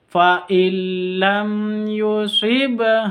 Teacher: Yusibaha, ada ba sukun di sini. Ada tanda sukunnya, berarti qalqalah sughra. Dipantulkan cara bacanya. Fa illam yusibha, wa panjang 2 harokat.